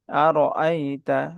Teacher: আর এর উচ্চারণটা মোটা হবে